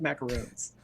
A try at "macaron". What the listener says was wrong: a macaron. It's one O.